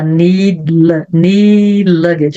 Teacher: need luggage, eu quase não pronunciei esse D.